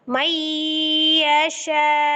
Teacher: Jadi karena dia wakaf di huruf hamzahnya juga, maka hamzahnya akan menjadi sukun, maka cara membacanya adalah juga dengan cara dinabar. · Posisinya kenapa dia binaber untuk di kalimat ini? Karena hamzahnya yang disukunkan ketika wakaf itu sebelumnya adalah mad ya. Bacaan panjang. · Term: dinaber